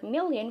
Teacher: It is the sound which is produced with complete closure of the airstream along the oral cavity so that the airstream is being released through the nose or nasal cavity